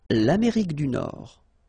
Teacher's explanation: Amérique du Nord. Final D not pronounced.